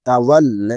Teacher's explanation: তা জবর তা, ওয়াও লাম জবর ওয়াল, তাওয়াল, লাম খাড়া জবর লা, এক আলিফ টান হবে